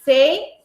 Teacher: não separa a sílaba, fica junto, é um ditongo.